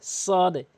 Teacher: জিব্বার আগাটা উপরে নিচে দুই দাঁতের আগাতে লাগাতে হবে